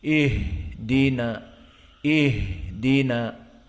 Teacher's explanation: Maka membaca ihdinas siratal mustaqim di saat sukun ha harus panjang sedikit. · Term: rukhawah